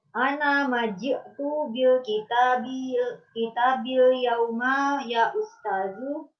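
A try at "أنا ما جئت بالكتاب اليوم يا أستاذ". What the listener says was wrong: Intonasinya salah, Bu. Ana maji'tu bil kitabil yauma ya ustazu. Betul, bukan ya ustazu. Kalau ya ustazu berarti pertanyaan ya ustazu.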